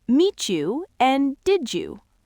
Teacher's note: we blend T and D into Y to make ch and J sounds